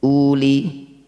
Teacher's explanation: ada dumah diikuti wau tapi waunya tidak ada sukun. Maka wau ini kita abaikan saja. Un-nya dibaca pendek.